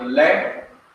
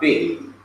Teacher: In other words, the simple Shua becomes a short Tariq. The simple Shua becomes a short I sound, like the I in fit, or bit, or kit, or lit. So this becomes a short I.